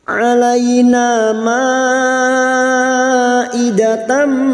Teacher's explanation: Alaina ma'idatam, idatam fathah tanwin pada tak marbutoh. Fathah tanwin bertemu mim idgham bi gunnah, siap masuk dan mendengung, masuk pada huruf mim dan mendengung selama 3 harokat